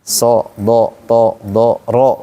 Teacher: Kita katakan huruf bulat karena saat dibaca fathah bunyinya o, itu kan bulat.